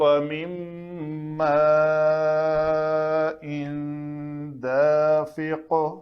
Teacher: فَلْيَنظُرِ الْإِنسَانُ مِمَّ خُلِقَ، خُلِقَ مِن مَّاءٍ دَافِقٍ، خُلِقَ قاف خا بھی پر، قاف بھی پر، بیچ میں لام پتلا ہے، تو خُلِقَ مِن مَّاءٍ دَافِقٍ، تو یہ قاف کے اوپر قلقلہ کریں گے۔